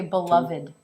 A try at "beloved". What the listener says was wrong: Okay, it's another V. One more time and just make it a little bit longer. Here he mispronounces the V as a W, which I have previously noted in another blog entry. When the lips do this, it's not a V. The lips must do this.